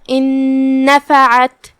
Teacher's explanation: ہم عین کو حلق کے درمیان والے حصے سے ادا کریں گے · ادغام کا معنی ہے کہ حرف کو حرف میں داخل کر دینا، تو ہم نون ساکن کو دوسرے نون میں داخل کر کے ایک ہی نون پڑھیں گے غنہ کے ساتھ اور تشدید کے ساتھ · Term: حرف العین